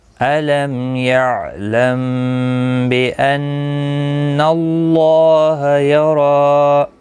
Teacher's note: میم ساکن کے بعد متحرک با آیا ہے، با آیا ہے تو اس لیے اخفا حقیقی ہوگا، غنہ کے ساتھ پڑھیں گے